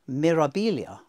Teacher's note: where you've got that B turning into a V for some reason